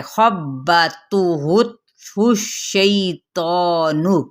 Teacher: خا کی زبر کو با کے ساتھ شدت سے ملائیں یعنی دبا کے پڑھے